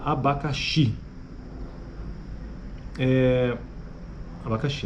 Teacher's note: As vogais pré-tônicas são todas A.